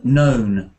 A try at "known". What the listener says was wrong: You said no without the n, without the un at the end. Known.